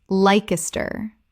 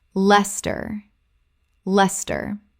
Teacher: Two syllables only. The i disappears entirely.